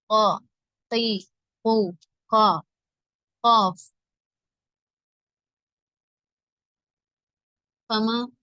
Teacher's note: நாவின் கடைசி பகுதி மேல் முரசில் தொட்டு விலகும் போது உண்டாகும் குரல் வாய் நிரம்ப ஒலிக்க வேண்டும்